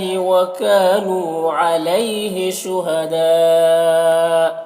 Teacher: یہاں پر مد متصل ہے، اسے 3-4 الف کے برابر کھینچ کر پڑھتے ہیں